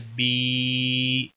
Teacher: उनके खींचने की मिकदार और खड़ी ज़बर, खड़ी ज़ेर, उल्टा पेश की मिकदार बराबर होती है, यानी एक अलिफ के बराबर इसको खींचा जाता है।